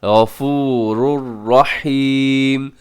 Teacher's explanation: تنوین کے بعد را ہے، تو یہاں پہ ادغام کریں گے لیکن ادغام یرملون ہوگا بغیر غننے کے